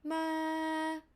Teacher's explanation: the falling tone would start from high pitch down to low pitch so your high pitch would be ma [Music] ah this is